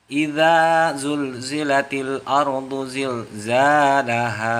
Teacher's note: Nah, pada ayat pertama itu ada bacaan harokat panjang 2 harokat. Pada bacaan idza, nah itu dibaca panjang 2 harokat.